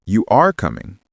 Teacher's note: Compare that to a statement. You are coming. The end falls.